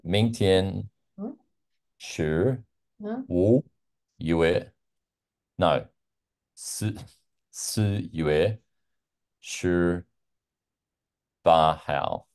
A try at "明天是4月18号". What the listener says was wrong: Yeah, perfect.